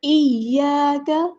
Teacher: ایاک حمزہ قطعی ہے تو اس کو اس جھٹکے کے ساتھ سخت آواز اس کی نکالنی ہے، واضح آواز اس کی نکالنی ہے۔ یا مشدد ہے تو ہم جو ہے اس کو 2 بار ادا کریں گے، ایک بار ساکن کر کے اور ایک بار اس کی حرکت کے مطابق۔ حمزہ کو یا کے ساتھ ملائیں گے، یا پہ مد اصلی ہو رہی ہے، خالی الف سے پہلے زبر ہے تو ہم ایک الف کے برابر یعنی 2 حرکات اور 2 کاؤنٹس لمبا کریں گے۔